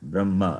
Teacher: There is no hakara sound when I say Brahma. Hakara sound not there.